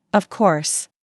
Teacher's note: For example, when they are surprised, their voice goes up, really? When they are certain, their voice goes down strongly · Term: intonation